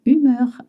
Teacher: Humeur as a H, but in French you don't pronounce it.